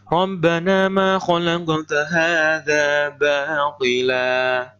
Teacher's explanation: Apabila seperti ini, ya, baqila, ada huruf yang panjang di akhir kalimat atau diwakafkan yang berharokat fathatain, cara membacanya bagaimana? Seolah-olah fathatain ini diganti dengan fathah biasa. Jadi panjang 2 ketukan.